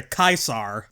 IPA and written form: kaɪsar (CAESAR)